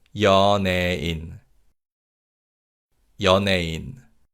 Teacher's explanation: the vowel 예 weakens, so it's pronounced like 에